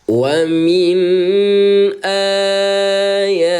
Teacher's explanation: a te panjang dulu empat ketukan. 1 2 3 empat pindah te ya.